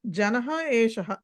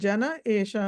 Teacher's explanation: ఆ తర్వాత జనః ఏషః అన్న దగ్గర కూడా జనః ఏషః పైన శ్లోకంలో జన ఏషః అని ఉంది కాబట్టి అక్కడ విసర్గ లోపం జరిగింది